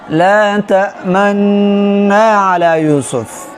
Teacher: اشمام واجب دی فروات د حفظ کې هغه اشمام داسې چې کله ته د نون د غنه شروع کې چې د دې سره فورا ستا شونډې ګول شي